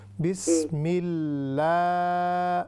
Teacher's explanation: جب بھی ہم بسم اللہ پڑھیں گے تو اس پر جو پہلے اللہ تعالیٰ کا نام ہے ہم اس کو تھوڑا سا لمبا کریں گے